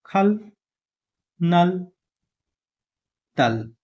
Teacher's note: लु आयो भनेपछि आधा ल साउन्ड गर्छ